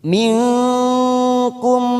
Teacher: Lam minkum, nun sukun bertemu kaf warna hijau, namanya bacaan ikfa. Namanya ikfa abad, samarkan bunyi nun sukun.